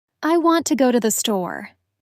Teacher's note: The unstressed words almost melt into each other. · Here the main stress is on want and store. The other words I to go to thee are spoken more quickly and lightly.